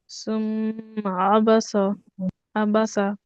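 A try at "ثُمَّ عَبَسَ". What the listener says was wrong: আপুর হচ্ছে নরম হরফগুলোতে সমস্যা হচ্ছে, সা উচ্চারণটা আরো পাতলা হবে। সুম্মা আবাসা।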